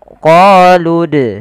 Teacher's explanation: Pada lafal bacaan dal apabila ada huruf dal berharokat sukun, maka kita baca dengan bacaan qalqalah, harus memantul.